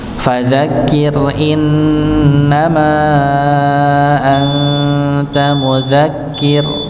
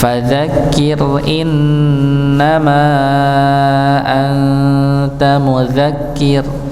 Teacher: ra-nya sukun juga dikarenakan waqaf, maka dibaca tipis